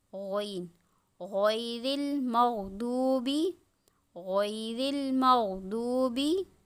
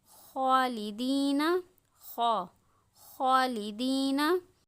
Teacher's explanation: ये वो हुरूफ हैं जो हलक के ऊपरी हिस्से से अदा होते हैं।